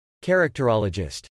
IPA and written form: t͡ʃɛɹəktɹɑləd͡ʒɪst (Characterologist)